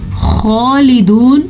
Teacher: خا منہ گول کر کے آپ پڑھیں گے تو پر پڑا جائے گا، یعنی کہ بھاری پڑا جائے گا۔ خالدون پڑھیں گے تو یہ غلط ہو جائے گا، اس کو خوبصورتی ہے، قرآن مجید کو خوبصورتی سے پڑھنے کے لیے یہ لفظ پر پڑا جاتا ہے، اسی لیے ان کو حروف مستعلیہ کہا جاتا ہے، یعنی کہ پر پڑے جانے والے حروف، ان کا گروپ۔